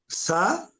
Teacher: పళ్ళతో పలికే స, దంత్యస. సా అన్నప్పుడు పళ్ళకు తగలాలి నాలుక, కాబట్టి దంత్యస అందాం దీన్ని.